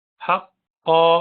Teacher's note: क़ा को भारी पढ़ना है, हुरूफ मुस्तअलिया में से है